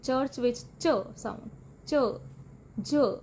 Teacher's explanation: ਪਲੋਸਿਵ ਤੇ ਫ੍ਰੀਕੇਟਿਵ ਦਾ ਕੰਬੀਨੇਸ਼ਨ ਹੁੰਦੀ ਹੈ। ਪਹਿਲਾਂ ਏਅਰ ਬਲੌਕ ਹੁੰਦੀ ਹੈ ਤੇ ਫਿਰ ਹੌਲੇ ਜਿਹੇ ਫ੍ਰਿਕਸ਼ਨ ਦੇ ਨਾਲ ਰਿਲੀਜ਼ ਹੁੰਦੀ ਹੈ, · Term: ਐਫਰੀਕੇਟ